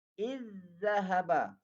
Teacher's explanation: Kalau jumpa zal jumpa zal ataupun zal mati bertemu dengan huruf za, maka diidghamkan. Dimasukkan zal yang pertama kepada huruf zal yang kedua. Ataupun dimasukkan zal yang mati itu kepada huruf selepasnya, itu huruf za.